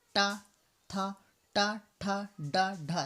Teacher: मूर्धन्य जो हम जबान को बिल्कुल ऊपर टच करके बोलते हैं, आगे जबान का आगे वाला हिस्सा ऊपर टच कर, जैसे टा था, टा ठा डा ढा। देखो जबान का बाहर जो आगे वाला हिस्सा होता है वो हम जो ऊपर टच करते हैं तब टा ठा की आवाज़ निकलती है